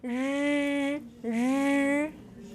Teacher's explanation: If you say 日 it sounds more like a fricative.